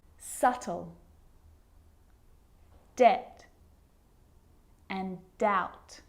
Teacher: my lips aren't closing and coming together to form the b sound i'm just pronouncing the t